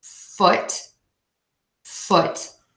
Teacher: nice and short and that quiet voiceless T at the end